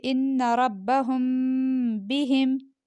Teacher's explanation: تو میم ساکن کے بعد با آئے تو میم ساکن کو غنہ کے ساتھ پڑھیں گے · ہم پہ ہم نے غنہ کیا، کیوں؟ اس کے بعد با آ رہا ہے اس لیے